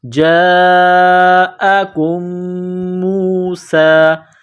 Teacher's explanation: میم پر غنہ کریں گے، آواز ناک میں چھپائیں گے، میم کو واو کے ساتھ ملائیں گے، جاءکم موسیٰ۔